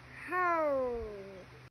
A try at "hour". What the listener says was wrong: Không phải là how. Hour. Hour. Không có âm hờ mà con.